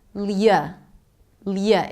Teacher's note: it's an L sound, a 'yuh' and a schwa